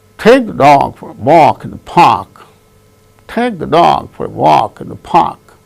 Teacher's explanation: Only take, dog, walk, park. Only these words gain stress because they are the content words